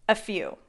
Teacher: is often linked to sound like a single word a few the stress is on the second syllable · The stress is on the second syllable. The vowel sound in few is oo, few, a few.